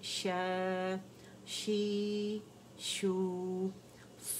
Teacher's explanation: پھر شین میں تفشی ہے، ٹھیک ہے، شین کا شور ہے